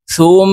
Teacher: সা মিম পেশ সুম, ওয়াজিব গুন্নাহ হরকতের বামে, নুনে মিমে তাসদিদ হইলে সর্ব অবস্থায় নাকের বাসি থেকে গুন্নাহ করিয়া পড়িতে হয়। তো আমরা এই সা তাসদিদওয়ালা মিমের সাথে গুন্নার সহিত পড়ব।